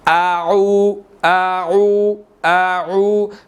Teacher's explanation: پہلے آپ نے حمزہ کو ادا کیا ہے، بعد میں عین کو ادا کیا ہے